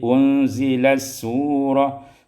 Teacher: diidghamkan ta pada sin menjadi unzilas surah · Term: idgham ta fi sin